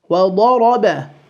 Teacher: The dad will be full, the ra will be full, and the ba will be light or empty.